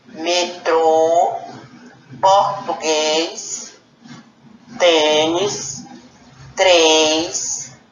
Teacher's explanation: todas essas palavras o som da vogal ficou fechada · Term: som fechado